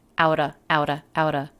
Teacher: and they are both flap t's get out uh get outta the word of is reduced to just the schwa